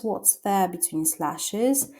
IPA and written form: wɒts ðeə bɪ'twi:n 'slæʃɪz (What's There Between Slashes)